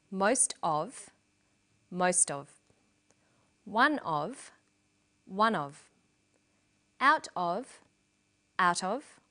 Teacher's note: Notice that of in these phrases is unstressed.